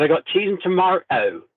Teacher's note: she changed the T to a glottal stop, so it became tomato, but then she put the Bristolian R in there